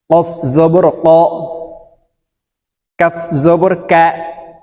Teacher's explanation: কফ উচ্চারণ হবে জিহ্বার গোড়া থেকে